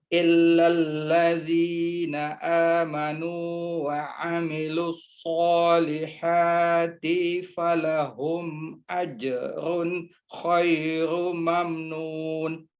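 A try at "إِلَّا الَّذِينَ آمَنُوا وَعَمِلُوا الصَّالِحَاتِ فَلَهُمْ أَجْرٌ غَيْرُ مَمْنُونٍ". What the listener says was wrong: Ghairu, bukan khairu, ghairu mamnun.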